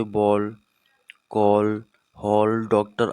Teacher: ग्रहित ध्वनियाँ अ, इसका प्रयोग केवल अंग्रेजी के शब्दों में किया जाता है। यह आ और ओ के बीच की ध्वनि है।